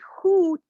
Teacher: when you say hoot, your tongue is kind of curled up and at the back of your mouth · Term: backness